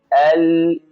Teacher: এই যে আল বলে একটু সময় ধরে রাখলাম, এটাকে আওয়াজ চালু বলে।